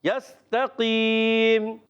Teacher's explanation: ٹھیک ہے, یستقیم, سین کو سیڑھی کے ساتھ یستقیم، تا کی زبر کو لمبا نہیں کرنا، یاد رکھنا ہے، یستقیم۔ یستقیم میں جو ہے قاف یہ موٹا رکھنا ہے، جی ہاں قاف کو موٹا رکھیں، یا ساکن سے پہلے آ گیا ہے زیر اور قاف ہے موٹا، یستقیم۔